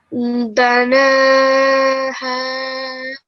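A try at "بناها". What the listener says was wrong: This noon with the vertical fatha, this was okay, but it sounded just a teeny tiny bit, too elongated. So just banaha.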